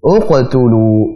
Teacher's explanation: Maka hamzah wasalnya dibaca dengan dhammah.